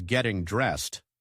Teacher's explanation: The ed in dressed sounds like a T sound